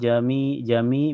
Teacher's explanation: karena ya sukun sebelumnya harokat kasrah di mi dibaca panjang 2 harokat